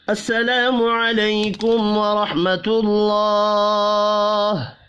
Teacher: السلام الف مدہ ہے، ایک الف کے برابر کھینچ کر پڑھیں گے. · کم میم ساکن کے بعد واو ہے، اظہار شفی ہوگا، غنہ نہیں ہوگا. ورح را زبر کی وجہ سے پر پڑھا جائے گا. حا ساکن پر قلقلہ نہیں کرنا.